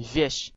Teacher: 条脷要再吞前少少。要更加靠近上颚嗰、那个硬颚嘅位置